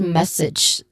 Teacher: Okay, that's the proper way to say it, message. So this is also the same word that has a stressed syllable, which is on the first syllable, mess.